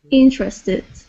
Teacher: Okay, so instead of saying interested, okay, it would be interested with the accent at the very beginning.